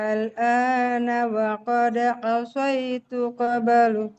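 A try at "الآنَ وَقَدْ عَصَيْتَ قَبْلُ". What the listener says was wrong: Asaita bukan asaitu.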